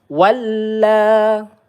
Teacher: walla lam bertasydid kita tekan terlebih dahulu ya